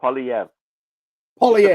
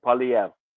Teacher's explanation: There's a slight R sound on the end.